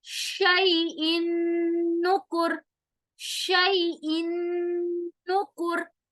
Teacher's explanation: نون کو ہم ناک میں لے جا رہے ہیں، غنہ ہو رہا ہے